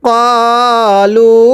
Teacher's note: এই লামের মধ্যে আমরা 3 আলিফ টান দিব। মদের হরফের উপর চিকন চিহ্ন, এরপরে লম্বা হামজা থাকলে সেখানে 3 আলিফ টানতে হয়।